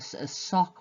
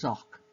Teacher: the s, the fricative s, which is unvoiced, has become the voiced version, which is z. So again, they are a pair. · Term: voicing